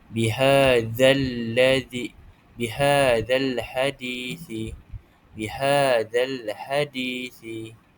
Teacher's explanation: Bunyi huruf lam disebut dengan jelas tanpa dengung. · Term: alif lam qamariah